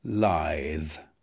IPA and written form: laɪð (lithe)